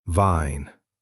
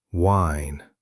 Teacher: V, teeth touch lip. W, lips make a circle.